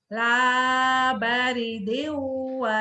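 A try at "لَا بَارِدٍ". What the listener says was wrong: lanya panjang. La baridin wa la karim.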